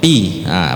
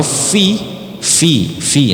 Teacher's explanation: kalau Pi jelas dia tidak akan ada angin keluar karena tertutup bibirnya tutup tertutup dua-duanya Piah beda kan kalau f fi fi Nah